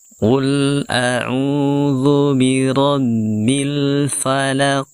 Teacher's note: Kemudian terakhir ada huruf qaf yang sukun, kita sukun pada akhir ayat 1 ini. Sehingga huruf qaf yang disukunkan ini kita pantulkan ya, dengan pantulan yang tebal. Karena sekali lagi huruf qaf adalah huruf yang tebal, maka kita tebalkan ya pantulannya.